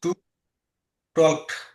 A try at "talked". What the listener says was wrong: হ্যাঁ, এলের উচ্চারণ হবে না।